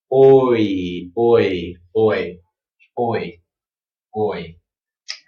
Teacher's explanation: first start out o, very wide, round lips, and then close your mouth and spread your lips kind of into a smile. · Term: diphthong